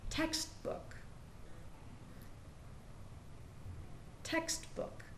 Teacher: We hear the e in text and the two o's in book become uh just one sound.